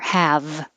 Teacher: if the final sound is voiced like have the vowel will be stretched a little longer